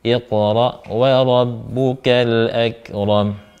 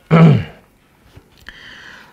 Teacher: Kemudian ra-nya tebal, mim hidup tapi disukunkan karena waqaf